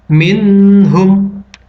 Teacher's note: Nun sukun dibaca jelas. Hukumnya adalah izhar halki. Alasannya, karena nun sukun bertemu dengan huruf H.